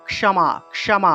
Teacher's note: প্রথমে ক উজ্জ্ব রূপে অর্থাৎ হসন্ত রূপে ক উচ্চারিত হবে